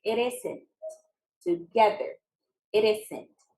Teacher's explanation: that is bumping the words together linking The Sounds together